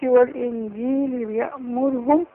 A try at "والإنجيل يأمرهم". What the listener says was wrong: لا مفيش واو.